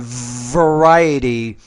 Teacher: pronounce the uh V with a little bit more vibration